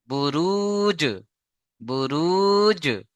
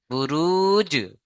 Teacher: জিমের উপরে সাকিন এসছে এই জিমটাকে কলকলা করতে হবে